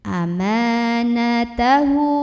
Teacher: Maka huruf mim yang berbaris fathah kita panjangkan 2 harokat. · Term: mad tabi'i